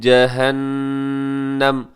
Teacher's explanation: وقف کریں گے تو پیش کو ساکن کر دیں گے